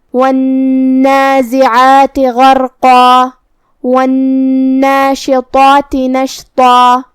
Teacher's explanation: طا کی ادائیگی زبان کی نوک اور اوپر کے دانتوں کی جڑ سے ہے. طا حروف التفخیم میں سے بھی ہے تو ہمیں اسے بھاری آواز میں منہ پھلا کے ادا کرنا ہے. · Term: حرف الطا